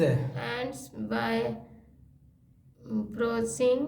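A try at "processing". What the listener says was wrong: प्रो आर है उसमें, आर है, आर है, आर है, आर क्यों बोल रही हैं तो?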